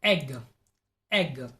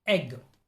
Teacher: the tongue is in the front of the mouth it has forward shift or forward movement · the body of the tongue is in the middle of the mouth the tongue is positioned midway between close and open vowel sounds